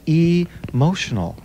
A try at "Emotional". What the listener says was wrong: Actually, you're pronouncing it pretty well. I wanted the E almost to seem like a scream.